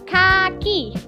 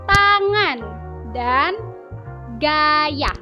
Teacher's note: lidah bagian belakang bertemu dengan langit-langit lunak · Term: dorselar